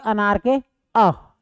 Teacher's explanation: ऐसा स्वर वर्ण जिसमें हमारा जीभ का मध्य भाग काम करे। ठीक है, जीभ का मध्य भाग। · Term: मध्य स्वर वर्ण